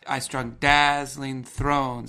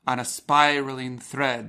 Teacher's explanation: each half line has a pattern of strong um and weak syllables and the alliteration is on the stressed syllables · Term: two strong beats